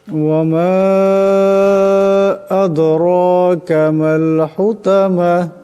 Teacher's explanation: এখানে মিমের উপর মদ আছে, সেটাকে লম্বা করিয়া পড়তে হবে।